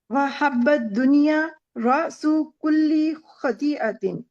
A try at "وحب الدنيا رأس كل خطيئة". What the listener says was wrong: حبت نہیں، حب الدنیا، حب ہوتا ہے نا، بولے اس